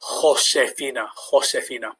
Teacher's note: The J is another key one to look out for, which has the H sound. So it's a bit like bringing up phlegm in the back of your throat.